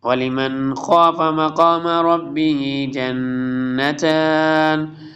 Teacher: یہاں پہ دیکھیں نون ساکن کے بعد حروف حلقی میں سے خا آ رہا ہے، حمزہ ہا، عین ہا، غین خا میں سے ایک خا آ رہا ہے، اس لیے یہاں پہ اظہار کریں، ریڈ کریں گے، کلیئر نون ریڈ ہوگا